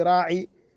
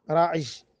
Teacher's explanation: وهي قلب الياء جيما بعد العين وبعد الياء مشددة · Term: العجعجة